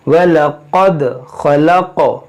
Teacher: دیکھیں قاف موٹا کریں گے, دال میں قلقلہ کریں گے, قاف میں قلقلہ کریں گے